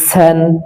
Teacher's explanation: সিন শক্ত হবে কিন্তু পাতলা হবে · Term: শক্ত কিন্তু পাতলা